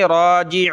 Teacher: रा को एक अलिफ की लिमिट में खींचेंगे